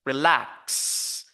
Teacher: so we focus on the second syllable with a higher pitch louder and stronger